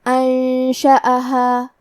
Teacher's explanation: انشأہا، الف پہ زبر ہے تو ہمیں حمزہ کو ظاہر کرنا ہے، حمزہ کی ادائیگی حلق کے نیچے والے حصے سے ہے۔ آخری میں الف پہ مد کا علامہ ہے، یہ مد جائز منفصل ہے تو ہم اپنی آواز 2 سے 4 مد کے برابر لمبی کریں گے۔ · کلمت انشأہا میں نون ساکن ہے، پھر حرف الشین ہے، شین حروف الاخفاء میں سے ہے تو ہم یہ حکم کو غنہ کے ساتھ ادا کریں گے